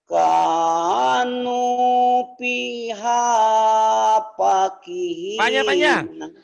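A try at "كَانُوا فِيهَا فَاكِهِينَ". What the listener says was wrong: Panjang. Kan ada yang berdiri. Ada yang berdiri nih.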